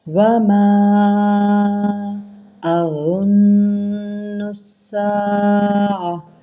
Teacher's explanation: اور نون مشدد پہ غنہ ہے، غنہ کریں اچھے طریقے سے، اس کے اوپر غنہ کر کے نون کو سین کے اندر ہم ملائیں گے۔